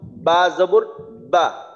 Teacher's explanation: বা বলার জন্য উপরের ঠোঁট নিচের ঠোঁটের সাথে লাগাইতে হয়